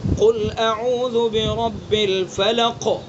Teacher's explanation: فلق کے اندر 2 درجے کا قلقلہ ہوگا چونکہ سکون وقفی ہے